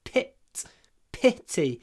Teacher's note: it's not Pete it's pit it's really short